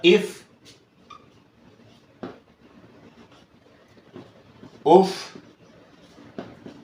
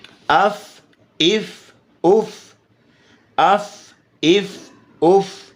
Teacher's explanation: آپ کے اوپر والے دونوں، اب اوپر والے دانتوں کا کنارہ نیچے والے ہونٹ کے ساتھ لگ رہا ہے